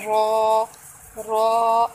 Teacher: रॉ हम कैसे पढ़ते हैं, रॉ को मोटा पढ़ते हैं, रॉ रॉ, और रॉ का मखरज है ज़ुबान के मोटे किनारे चार दांतों के मसूड़े